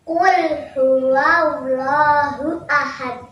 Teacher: huruf dal yang diwakafkan maka dibaca. qalqalah.